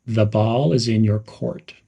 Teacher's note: Emphasize the words ball and court. Smoothly connect the to ball.